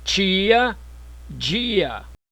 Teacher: Palatalização das consoantes T e D quando seguidas da vogal I